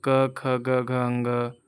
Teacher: क वर्ग का उच्चारण स्थान कंठ से होता है